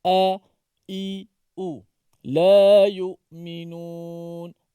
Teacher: Suara dan nafasnya tertahan pada makhraj hamzah yang berada di pangkal halqum.